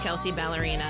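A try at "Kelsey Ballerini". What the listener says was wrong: You're butchering that name. Is an I at the end. It's not Kelsey Ballerina. Ballerini.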